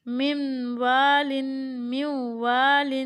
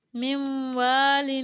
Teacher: نون ساکن کے بعد واو حرف یرملون میں سے ہے تو ہم اس کو غنہ کے ساتھ ملا کر پڑھیں گے